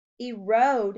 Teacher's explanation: Erode has a long O sound in the second syllable.